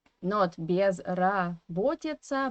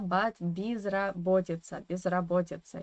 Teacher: in the first syllable, is in unstressed weak position, of course, and we have to pronounce it as E